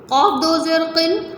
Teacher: قاف دو زیر قن حلق سے موٹا کر کے